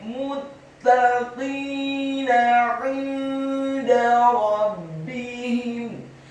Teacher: Kata 'inda, huruf ain-nya ditekankan, keluar dari tenggorokan bagian tengah, kasroh satu harokat, kemudian huruf nun yang sukun bertemu dengan huruf dal yang tipis, tarqiq dan fathah.